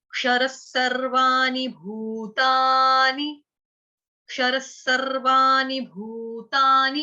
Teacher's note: अब जो क्षर शब्द है वो आपका ऑलरेडी यहाँ पर भी हो गया, विसर्ग है, विसर्ग का उच्चारण आधे स हलंत स से करेंगे